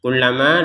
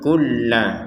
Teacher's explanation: Nah, seperti itu. Kullama, lamnya ditekan, kulla, kemudian ma-nya dipanjangkan 2 harokat